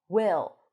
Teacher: So we have our lax I sound.